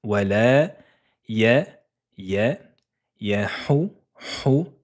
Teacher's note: Là, c'est la lettre h et la lettre h fait ressortir de l'air. C'est comme si on expirait quelque chose.